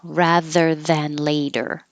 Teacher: And the T changes to a D in later.